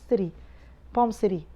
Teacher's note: When it's medial it's pronounced as ره, it's a flap T